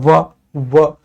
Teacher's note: व होठों का भी प्रयोग होगा और जिभ्या दांतों को भी छूने का प्रयास करेगी। व तो सर इनको कहते हैं कि यह दंत और ओष्ठ दोनों से उच्चारित होता है।